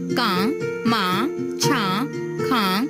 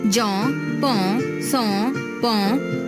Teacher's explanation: ਬਿੰਦੀ ਅਤੇ ਟਿੱਪੀ ਦੀ ਆਵਾਜ਼ ਨੱਕ ਰਾਹੀਂ ਨਿਕਲਦੀ ਹੈ।